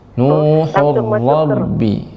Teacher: ra tebal karena tasdid dan barokat fathah